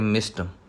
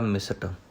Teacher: ਮਿਸ਼ਟ ਬਾਣੀ ਟੈਂਕਾ ਪੂਰਾ ਬੋਲਿਆ ਜਾਵੇਗਾ, ਸੱਸਾ ਅੱਧਾ, ਕਿਉਂਕਿ ਸੱਸੇ ਦੇ ਵਿੱਚੋਂ ਸਵਰ ਨਹੀਂ ਹੈ